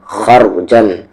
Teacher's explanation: را ہیوی ہوگا اور جیم کو صاف صاف پڑھیں گے کیونکہ عین اخفا لیٹر نہیں ہے.